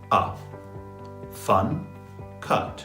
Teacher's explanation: my jaw opens, A, but my lips stay quite relaxed. And the tongue, most important, moves a little bit backwards, inside the mouth and backwards. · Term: vowel 1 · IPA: /ʌ/